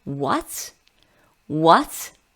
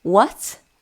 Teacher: The second tone is a rising tone.